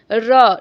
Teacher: चूंकि वर्ण का उच्चारण करते समय जीभ में कंपन भी होता है तो इसे प्रकंपित व्यंजन भी कहा जाता है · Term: लुंठित व्यंजन